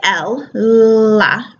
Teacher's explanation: when we say L LA our tongue tip is touching this bumpy part called the alveolar Ridge behind our teeth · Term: L sound